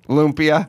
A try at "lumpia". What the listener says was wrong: Lumpia. Oh, why are you, where'd the R come from?